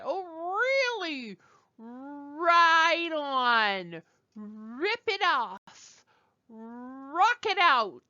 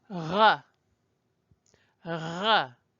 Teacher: Our R is right at the front of our mouths.